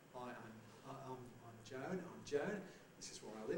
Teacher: with rising tones again a sort of suggestion that we're putting forward these statements hesitantly we want you to agree so it's a kind of way